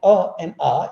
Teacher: the distinction between ah and ah is only about shorter duration and longer duration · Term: long vowel